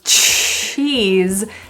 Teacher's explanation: cheese has that little T sound